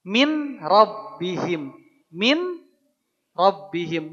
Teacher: Leburkan ke dalam huruf ro. Awalnya min jadi mir. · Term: idgham bila ghunah